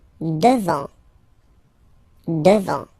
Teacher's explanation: final T not pronounced